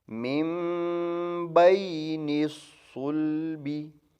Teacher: صاد کو موٹا پڑھیں گے پر کر کے